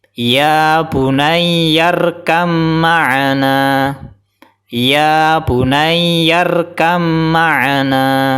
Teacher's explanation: Karena qalqalahnya masih kelihatan, masih dipantulkan dan belum dimasukkan ke ba.